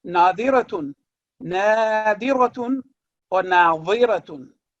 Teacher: दौद और ज़ ये दोनों थिक लेटर्स हैं, लेकिन दोनों का मखरज बिल्कुल मुख्तलिफ है।